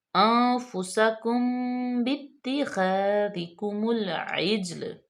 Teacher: نون ساکن کے بعد فا حروف فا میں سے انفسکم باتخاذ، میم ساکن کے بعد با آ گیا تو یہاں پہ اخفاء شفوی ہوگا